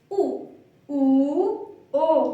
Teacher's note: जिनको बोलते समय हमारी होंठें जो है वो गोल हो जाएं उन्हीं को हम कहेंगे व्रतमुखी स्वर